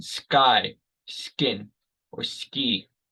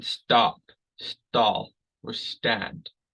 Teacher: when we have an s first we don't make that breath of air